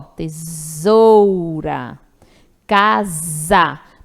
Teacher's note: quando eu tenho vogal e vogal esse S tem o som do Z